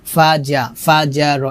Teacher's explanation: জিহ্বার মধ্যখান উপরে তালুর সঙ্গে লাগিয়ে জিম উচ্চারণ করতে হবে, ফাজা, ফাজার, এভাবে।